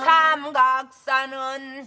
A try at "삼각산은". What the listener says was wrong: 삼각산은 각에다 각 주지 마세요. 각 빼.